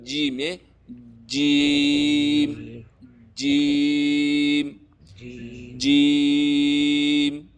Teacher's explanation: جیم ادا کېږي د ژبې د منځ او د بره تالونه. د ژبې منځ چې دی هغه دا دی.